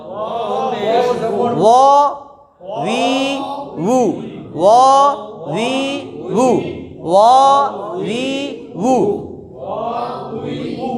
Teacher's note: ওয়াও দুই ঠোঁটের মাঝখানের ফাঁকা থেকে আদায় হয়